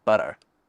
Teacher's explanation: Involves tapping your gums just behind your top front teeth. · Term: flapping